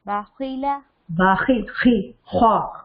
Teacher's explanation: خا یہ بولتے ہوئے ایسا محسوس ہوتا ہے کہ گلے کے اندر سے آواز آ رہی ہوتی ہے قریب سے. اس کو ادنا حلق، ادنا کا مطلب ہوتا ہے قریب.